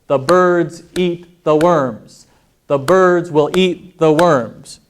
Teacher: even though the sentences get longer the time it takes me to say the sentences generally the same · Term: stress timed languages